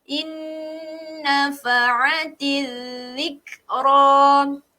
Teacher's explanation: Kita dengungkan sebab apa? Sebab kita jumpa nun yang bertanda syaddah.